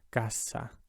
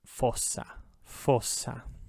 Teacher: Just in between two vowels, it has a z sound, and anywhere else it's s. And also if you double it, it maintains the s sound even if it's between vowels